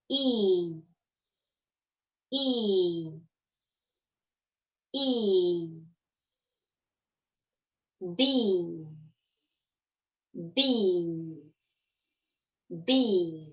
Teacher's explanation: Il se prononce avec la bouche presque complètement fermée et les lèvres étirées, comme quand on sourit. La vibration sonore se situe plutôt à l'avant de la bouche, derrière les dents. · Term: le I de bee